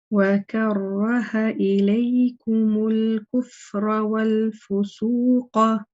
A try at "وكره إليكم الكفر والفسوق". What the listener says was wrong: The ra in al-kufra, this ra here can be a little bit heavier. It was a little bit on the light side. The first ra, mashallah, in karraha, that was fine. But the next one in al-kufr.